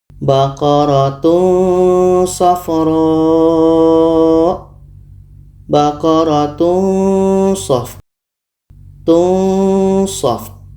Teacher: Ketika sebut tanwin kita sudah merasakan huruf sha. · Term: ikhfa hakiki